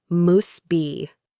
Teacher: In careful speech, we say must be. But in reality, you will almost always hear muss be.